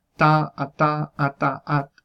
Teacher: la T del inglés, se pronuncia en los alveolos